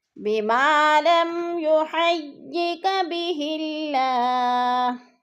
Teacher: بما پہ الف مدہ ہے، الف مدہ کو ایک الف 2 حرکات کے برابر لمبا کرنا ہے، اور بہ اللہ کی اللہ کو باریک پڑھیں گے. اللہ سے پہلے لفظ ہاں کے نیچے زیر ہے تو اللہ باریک پڑھا جائے گا، اس کو موٹا نہیں کریں گے